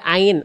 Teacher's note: Huruf ain, huruf tipis keluar dari tengah tenggorokan. Pangkal lidahnya kan nggak naik.